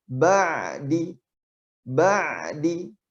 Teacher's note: Tapi huruf ain dia tidak tertahan karena dia sifatnya bainiyah.